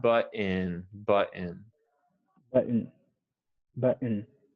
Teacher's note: now the o n sounds more like the schwa sound